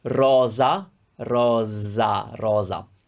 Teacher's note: You're not going to find za, ze, zi, zo, zu at the beginning of a word because in Italian, like that English word rose, the reason that you have rose is because the S is between vowels there. So in Italian, you will have a Z when the S is between two vowels